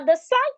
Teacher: the stress moves to the second syllable because it's a verb